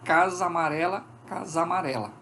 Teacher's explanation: é um fenômeno de crase as duas vogais se fundem